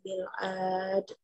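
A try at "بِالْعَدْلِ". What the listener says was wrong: Itu pendek, bil ad.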